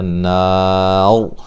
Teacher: وقفاً را کو موٹا کریں گے، ملانے کی صورت میں را باریک ہوگی